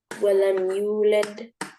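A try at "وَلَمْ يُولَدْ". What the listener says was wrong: I didn't hear that D sound.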